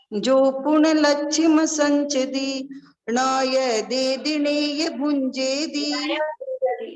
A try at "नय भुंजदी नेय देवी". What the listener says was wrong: नय भुंजदी नेय देवी। भुंजदी, हाँ भुजंदी बोला था अभी आपने पहले, भुंजदी है, भुंजदी।